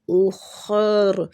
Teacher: خا اور را دونوں کو پور پڑھیں گے